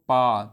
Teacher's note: पा वर्ग का उच्चारण होता है ओष्ठ से